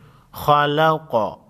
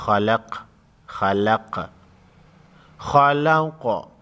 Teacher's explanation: قاف ساکن کو ہلا کر پڑھیں گے کیونکہ قاف ساکن حروف قلقلہ میں سے ہے